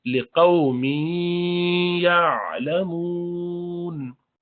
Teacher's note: تنوین کے بعد یا آیا یرملون کا، تو ادغام کریں گے غنہ کے ساتھ